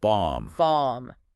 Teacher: That O is a much more open ah sound like in father